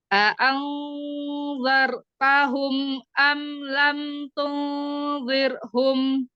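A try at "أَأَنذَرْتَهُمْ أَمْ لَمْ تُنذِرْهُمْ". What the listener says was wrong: Nah, ini malah jadi tebal sekali ya. Tunzir. Siap-siap nanti lidahnya. Jadi siap-siap makhrajnya ketika kita ikhfa ya, dibaca ikhfa ini lidah kita sudah siap-siap ke makhraj ya, huruf berikutnya ini ya.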